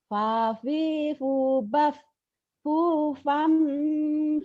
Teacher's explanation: Jangan ember, ember bunyi M. Fufam tapi bindeng, bibirnya mingkem. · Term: ikhfa